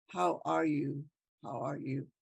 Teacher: you realize you're asking a question so then your voice goes up on the end